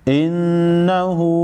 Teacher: नून मुशद्दद पर गुन्ना होगा।